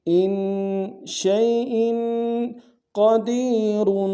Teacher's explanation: گے حمزہ کے نیچے تنوین غنہ کریں گے ان شیئن قدیر قاف کو موٹا ادا کریں گے